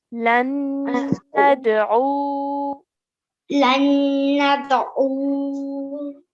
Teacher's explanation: stretch the U for 2 counts